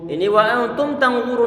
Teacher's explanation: kemudian nun dia disukunkan bertemu dengan huruf ta. Ini dia bacaan ikhfa. Kita berikan sifat gunnah atau pendengungan ditahan di sana. Kemudian sambil berusaha untuk mempersiapkan mengucapkan huruf ta setelahnya.